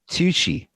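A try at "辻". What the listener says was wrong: It's with a J. Sir. No, Suji. Like a G. Just No, I say Tsuji.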